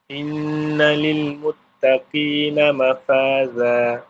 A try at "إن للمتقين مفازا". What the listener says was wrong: Za tu bagi tebal lah. Inna lil muttaqina mafaza.